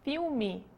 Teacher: quando eu digo a palavra filme, eu não estou dizendo o som do L como ele é dito em inglês, eu estou dizendo um U.